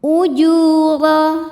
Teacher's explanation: Hunna ujuh. Ju mad tabi'i dhahiri karena ada waw sukun didahului dhammah, maka panjang jimnya 2 harokat